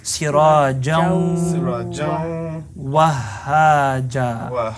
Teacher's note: We're going to keep a little bit of the noon and we're going to hold it in our nose.